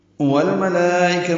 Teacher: والملائکہ میں لام ساکن پہ اظہار قمری ہے اور ملائکہ کے لام پر کھڑا زبر کے بعد حمزہ آنے کی وجہ سے مد متصل بنی ہے. والملائکۃ کاف باریک ہے، تا کو معروف طریقے سے ادا کریں گے.